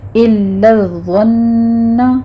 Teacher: الا الظن، لام پر تشدید ہے، سختی کیجیے، ضا پر تشدید ہے، نون پر تشدید ہے لیکن نون پر غنہ ہوگا، اور ضا کو آپ نے پر پڑھنا ہے، یہاں پر آپ نے سیٹی کی آواز نہیں لانی۔